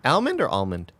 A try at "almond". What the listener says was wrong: No L. There's no L in the pronunciation. Almond.